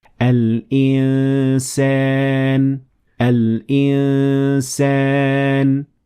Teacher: आपका मुंह सीन की अदायगी के लिए तैयार होना चाहिए। लेकिन आप हवा नाक से गुजार रहे होंगे और आवाज पर नाक की खासियत गालिब होगी जो दो हरकात तक जारी रहेगी तो आवाज कुछ यूं बनेगी। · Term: इफा